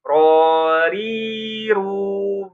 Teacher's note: Nah, ro tebal, ri tipis, ru juga tebal.